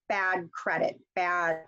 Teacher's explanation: I actually almost drop the D off and go straight to the C